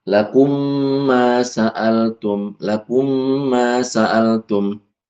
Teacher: diidgamkan saja seperti mim tasdid itu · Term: idgham